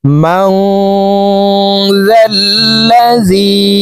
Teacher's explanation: লাহু মা ফিস সামাওয়াতি ওয়া মা ফিল আরদ মান যাল্লাযী, মাং এখানে ইকফা গুন্না, নুন সাকিনের পরে ইকফার হরফ জাল আসছে, এই কারণে এই নুন সাকিনকে নাকের ভিতরে লুকাইয়া গুন্নার সহিত পড়ব